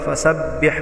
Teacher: وَرَأَيْتَ النَّاسَ يَدْخُلُونَ فِي دِينِ اللَّهِ أَفْوَاجًا فَسَبِّحْ سین میں مثل سیٹی کی آواز، فَسَبِّحْ میں با مشددہ کو سختی سے پڑھیں گے. بِحْ ہا وسط حلق سے ادا کریں گے.